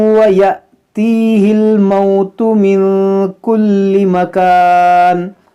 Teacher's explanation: الف کے اوپر جزم ہے یہ حمزہ ساکنہ ہے، تو اس کو جھٹکا دے کر پڑھیں گے